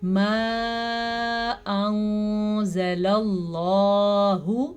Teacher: لفظ اللہ کو پر کرنا ہے زبر کی وجہ سے